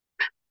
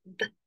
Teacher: The only difference is in the manner of production-- /p/ is unvoiced or voiceless, and /b/ is voiced.